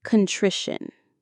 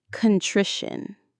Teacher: The stress is on that middle syllable, tri, contrition.